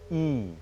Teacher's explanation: If you close the jaw a little, it will become e, slightly high